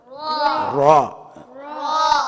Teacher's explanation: ரா என்பது நுனிநாவின் மேல் பகுதி மேல் முரசை தொட்டு விலகும்போது, மேல் முரசு போய் இந்த ரேக்கு சபர் வைக்கும்போது ரா.